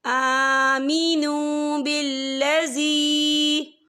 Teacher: وَقَالَتْ طَائِفَةٌ مِّنْ أَهْلِ الْكِتَابِ آمِنُوا بِالَّذِي، یہ دیکھیں بالذی، یہاں پر یا مدہ بھی ہو رہا ہے، یا ساکن ہے، یا ساکن سے پہلے زیر ہے اور اس پہ چھوٹی سی مد بھی ہے، تو ہم اسے 3 یا 4 حرکت کے برابر کھینچ کے پڑھیں گے